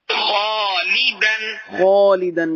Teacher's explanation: خالدن میں خا پر تھا، الف بھی پر ہو گیا